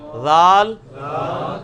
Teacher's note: اچھا ذال, زا, وہ, ذال, زا, وہ, ذال. نہیں یہ سیٹی کی آواز نہیں ذال میں آنی چاہیے, یہ نرمی والا ہے, یہ اس کے نیچے آیا ہوا ہے ذال, نرمی کے ساتھ ذال.